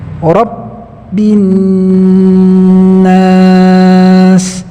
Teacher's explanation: Jadi ketika huruf ba yang bertasdid, maka suara tertahan, tidak boleh berjalan. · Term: sifat syiddah